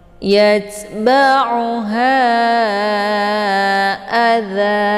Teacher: Jadi hilangkan satu baris kemudian dipanjangkan 2 harokat ya. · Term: mad iwad